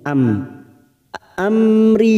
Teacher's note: mim sukun bertemu ro namanya bacaan idhar syafawi kita baca jelas tanpa mendengung